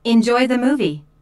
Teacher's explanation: Notice how the intonation rises on movie.